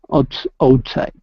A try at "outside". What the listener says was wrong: Try that last word one more time. Instead of outside, it's outside. The stress is on the end. Outside.